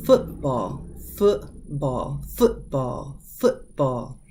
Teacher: You'll hear this little stop happen within your throat and it skips over that T sound. Football. It's like it's wanting to do that T sound, but the throat closes.